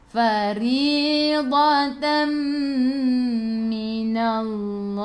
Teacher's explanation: Kalau huruf mim dengan nun idgham ma'al gunnah, masuk bersama dengan dengung 2 harakat.